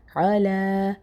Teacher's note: کھڑا زبر ہے تو تھوڑا ایک الف کے برابر کھینچے پڑھیں گے